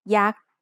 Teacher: Yak is high tone because it has a low-class consonant and a dead syllable